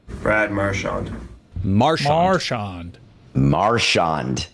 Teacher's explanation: He puts the emphasis on the first syllable.